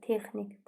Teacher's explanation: Vurğu son hecada yox, birinci hecadadır.